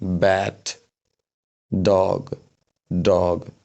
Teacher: ब्याथ भन्दाखेरि त्यति धेरै हाफा बाहिर निस्केको छैन। बाहिर त निस्किन्छ अब हाफा बाहिर ननिस्किकन प्रोडुस नै हुदैन साउन्ड तर स्लोली ब्याट >> सरी र उता फ्यान फ्यान भन्दा खेरि अलि बढी प्रेसरमा हा निस्किन्छ यति फरक हो यो दुइटाको बिचमा। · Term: वक साउन्डहरु